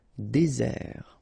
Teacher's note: Désert, okay, remember, final T not pronounced, désert. And really this z sound just because you get one S between the two vowels